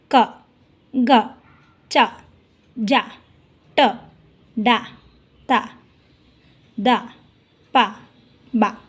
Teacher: ಅಲ್ಪ ಅಂದರೆ ಸ್ವಲ್ಪ ಅಂತ, ಕಡಿಮೆ ಕಾಲಾವಧಿ ಅಂದರೆ ಕಡಿಮೆ ಉಸಿರಿನಿಂದ ಉಚ್ಚರಿಸಲ್ಪಡುವಂತಹ ವ್ಯಂಜನಗಳಿಗೆ ಅಲ್ಪಪ್ರಾಣ ಅಂತ ಹೇಳಿ ಕರಿತೀವಿ